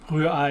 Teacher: two german r's that you have to get from the back of your throat this very very alien to english speakers and then an ooh